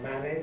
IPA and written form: ˈmæni (many)